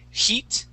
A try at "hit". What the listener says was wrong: we want to use a short I, and so instead of saying heat, we want to say hit.